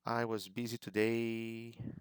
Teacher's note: they kind of raised intonation a little bit